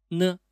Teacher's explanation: Pressing the tongue against the upper gum is pronounced nasal. Sounds like the N in the word next.